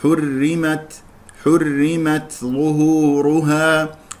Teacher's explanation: هل انتبهتم الى كيفيه همس التاء التاء مهموسه في الوسط والوقف